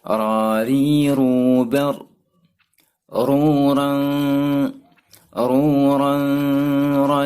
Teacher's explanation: ujung lidah agak kedalam mengenai gusi gigi seri bagian atas